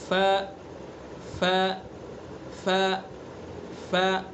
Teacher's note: ثنا علیہ جو اوپر والے دو دانت ہیں ان کے کنارے کو نیچے کے جو نیچے کا جو ہونٹ ہے اس کے تر والے حصے پر لگائیں گے. ف ف ف ف، تر والے حصے پر.